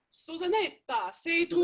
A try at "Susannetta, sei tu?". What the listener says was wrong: Susannetta, remember, Susannetta, double N. Susannetta, sei tu? Even more N, Susannetta, Susannetta.